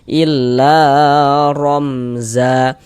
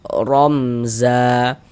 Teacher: Huruf ra memiliki harokat fathah dibaca tabkhim.